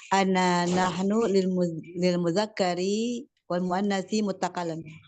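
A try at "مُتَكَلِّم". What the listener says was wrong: Barakallahu fiki.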